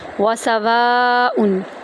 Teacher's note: واو کو ہم 3 سے 5 الف کے برابر لمبا کریں گے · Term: مد